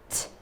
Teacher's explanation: the stream of air passes easily without uh any vibration they are called voiceless consonants